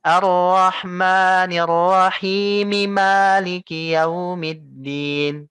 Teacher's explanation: maka arrahmanirahim himnya engak usah panjang kalau mau Kamu lanjut tapi himnya kembali lagi menjadi dua madnya jugaah bukan Mad arkun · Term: mad asli